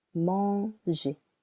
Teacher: for the verb manger, the first syllable is a little longer.